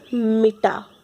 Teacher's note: प्रत्येक शब्द का उच्चारण करते समय किसी एक अक्षर पर अधिक बल दिया जाता है, जैसे मिटा। मिटा में ट पे अधिक बल दिया जा रहा है। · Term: शब्द बलाघात